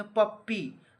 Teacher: पप्पी कहाँ से लिया जाता है, तो ओष्ठ से, ओठ से लिया जाता है तो ओष्ठ हो जाएगा। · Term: प वर्ग